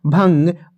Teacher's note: अनुस्वार के उच्चारण में हवा केवल नाक से बाहर निकलती है